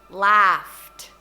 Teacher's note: kalau itu unvoiced, kayak laughed, itu nanti ed itu kayak T